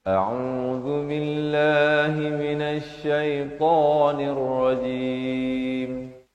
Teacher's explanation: Lafaz jalalah dibaca nipis 2 harakat.